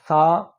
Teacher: تھوڑی سی زبان کو باہر نکال لینا ہے اور اوپر والے دانتوں کے ساتھ رکھنا ہے اور ہلکا سا زور لگانا ہے، زیادہ زور نہیں لگانا۔